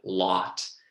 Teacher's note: Another feature is when we think of words like lot or rod, they've got an unrounded vowel. So I didn't go lot or rod, but I just said lot.